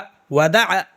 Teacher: عین بولنا ہے حلق سے، بیچ سے، یہ حلق جو ہے نا پورا اس کے بیچ سے بولنا ہے